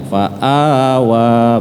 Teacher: tidak boleh lebih dari dua harakat Karena itu adalah fathah panjang dua-duanya fathah panjang dibaca panjang cuman dua harakat tidak boleh lebih